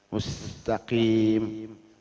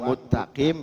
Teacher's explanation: Tapi kalau misalkan jelas mengidghamnya sinnya dibuang, muttaqim, itu tidak sah.